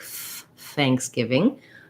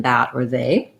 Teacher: it's the voiceless th sound so it just has air